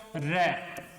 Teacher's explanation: प्रकंपित या लुंठित मतलब इसका उच्चारण करने पर श्वास वायु कंपन करती है दोस्तों